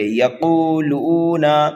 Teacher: لام کو کھینچ کر کے پڑھیں گے، نون کو جلدی پڑھیں گے